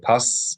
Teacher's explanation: doubling continuing the sound of the S as if it's twice without the vowel separating the two s sounds so it's like pass and then together you're elongating the S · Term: elongating the S consonant